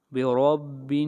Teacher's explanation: را کو موٹا پڑھیں گے اس لیے کہ را کے اوپر زبر ہے. جہاں بھی را کے اوپر زبر آئے گی یا پیش آئے گی وہاں پر را کو موٹا پڑھا جائے گا.